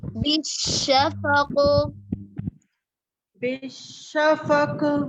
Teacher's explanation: कॉफ बिल्कुल वाज़े ही नहीं है, कॉफ साकिन में शिद्दा होता है, शिद्दा में आवाज मुकम्मल तौर पर बंद हो जाती है, इसलिए उस कॉफ को वाज़े करने के लिए उसमें कलकला होगा